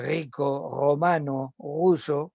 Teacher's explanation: ha suplantado una velarización por un fonema alveolar que debería estar presente